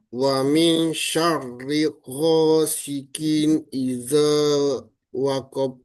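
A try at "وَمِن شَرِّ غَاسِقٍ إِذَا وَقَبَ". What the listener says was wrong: Waqab. Qalqalahnya ketinggalan. Waqab.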